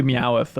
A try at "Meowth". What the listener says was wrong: Did you say Meowth? There's an extra syllable in there? Meowth.